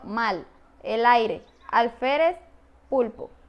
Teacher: se articula con el ápice de la lengua contra los alveolos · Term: lateral linguoalveolar